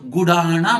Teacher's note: ನಮ್ಮ ಕನ್ನಡದಲ್ಲಿ ಮೂರ್ಧನ್ಯ ಣ ಮಾಡಿಕೊಂಡು ಗುಡಾಣ ಮಾಡಿಕೊಂಡಿದ್ದೇವೆ